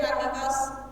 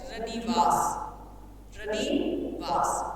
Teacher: मूल शब्द के दोनों वर्णों के स्वरों में क्या होगा, ह्रस्वीकरण हो जाएगा।